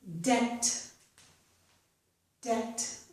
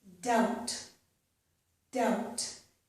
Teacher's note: we don't pronounce the letter B. Notice that both of these end in BT. Okay? So the letter B is not pronounced.